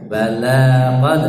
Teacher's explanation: Bala, balanya dua ketukan, ya.